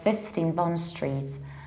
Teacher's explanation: falling on the next word so Bond Street in our case we need to shift this stress and stress the very first syllable